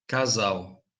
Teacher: note that between vowels it's z in both european and brazilian accents